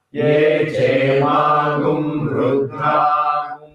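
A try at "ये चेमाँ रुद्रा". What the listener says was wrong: That gu, you should not give any stress.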